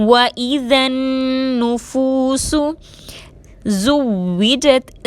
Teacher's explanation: زا کو سیٹی کے ساتھ ادا کریں گے، واو مشدد کو مضبوطی اور دباؤ کے ساتھ ادا کریں گے، جیم کو تا سے ملائیں گے۔